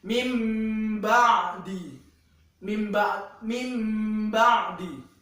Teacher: cara membacanya adalah dengan diubah dari yang harusnya nun sukun diubah seperti huruf mim. Kalau secara pengertiannya sendiri itu mengubah, mengganti atau meleburkan huruf nun sukun menjadi mim, begitu. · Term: iklab